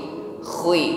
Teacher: Jadi kha-nya tetap ada dengkurnya, ya, khi, namun tidak ditekan secara berlebih, ya.